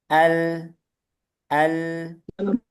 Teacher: Kalau lam masih ada aliran tapi sedikit.